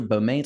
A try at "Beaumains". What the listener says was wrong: Bullman, is it? So you don't say the S, that just means it's plural, but you don't say it.